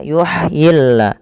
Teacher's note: Makhraj huruf ha kecil adalah dari tengah tenggorokan kita.